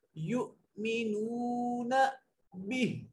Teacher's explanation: یؤمنون به یہاں وقف کی علامت ہے, ہا کو پڑھیں گے, ہا کی حرکت کو نہیں پڑھیں گے